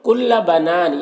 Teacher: کل بنان، یہاں پر الف مدہ ہے اور اگر یہاں پر وقف کریں گے تو نون کی جو دو زیر کی تنوین سکون سے بدل جائے گا تو پھر مد عارض وقفی ہوگا۔ اس میں طول، توسط، قصر تینوں جائز ہوتا ہے۔